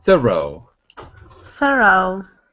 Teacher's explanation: make sure that the r is at the beginning of the second syllable it makes it much easier not th but th R thoro